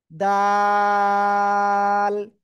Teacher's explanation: এই দাল অক্ষরটা আমরা তিন আলিফ টেনে পড়বো। জিহ্বার আগায় সামনের উপরে দুই দাঁতের গোড়ায় লাগাবো, এই যে এরকম।